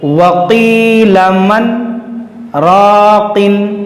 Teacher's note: यहाँ पर हमने आवाज़ रोका, सांस जारी है, सांस नहीं तोड़ना है, तो इसी को कहते हैं सक्ता।